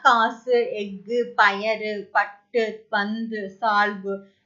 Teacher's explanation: கடைசியில வர உகரம் வந்து குறைந்து ஒலிக்குது · சோ அந்த மாத்திரை அளவு வந்து பாத்தீங்கன்னா ஒரு மாத்திரைக்கு பதிலா அரை மாத்திரை அளவு தான் ஒலிக்குது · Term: குற்றியல் உகரம்